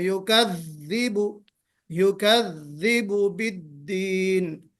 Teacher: अब दाल में जहर की सिफत तो है, यानी बहुत सॉफ्टली नहीं पढ़ेंगे हम इसको, थोड़ा सा आवाज जो है जोर दे के, जोरदार आवाज में